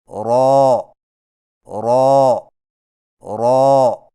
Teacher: را کی ادائیگی میں زبان کی نوک کی پشت کو اوپر والے دانتوں کے مسوڑوں سے لگا کر موٹی آواز میں پڑھیں